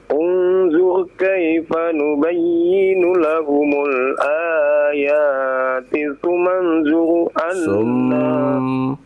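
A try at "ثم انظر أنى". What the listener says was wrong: Sum ada tasydidnya Pak, dibaca.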